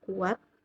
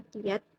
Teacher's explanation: dua buah bunyi vokal yang berdampingan tapi terpisahkan oleh suku kata